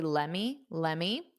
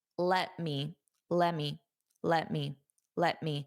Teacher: I personally don't say it that unstressed. I pronounce a little bit of the T.